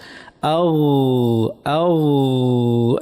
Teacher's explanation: জিব্বার গোড়াটা আমাদের উপরে যে মুখের তালু আছে একদম তার পিছনে লাগিয়ে কন্টিনিউয়াস একটা আওয়াজ করতে হবে, নরম আওয়াজ। আও আও, নরম একটা চলমান আওয়াজ করতে হবে। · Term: গইন